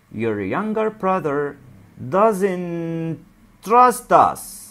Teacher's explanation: علشان كده ما نقولش doesn't وبعدين نقول trust، لا، هننطقهم هما الاثنين كأنهم كلمة واحدة بينهم تاء واحدة بس